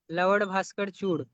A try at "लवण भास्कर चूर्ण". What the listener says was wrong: भास्कर, लवन आप र कोड़ा बोल रहे थे, लवन भास्कर। तो बोलिए लवन भास्कर चूर्ण।